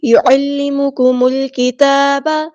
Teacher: وَيُعَلِّمُكُمُ الْكِتَابَ، عین کو وسطی لیکن مڈل تھروٹ سے ادا کرنا ہے، ہم نے میم کو لام کے ساتھ ملا دینا ہے، حمزۃ الوصل ہمارا ڈراپ ہو جائے گا، لام یہاں پر لام قمریہ ہے، اس کو ہم ظاہر کریں گے · تا پہ کھڑا زبر ہے، یعنی حرکات مد آئی ہے تو الف کے برابر لمبا کریں گے